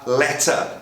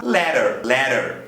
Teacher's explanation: na versão americana o t vai virar um ra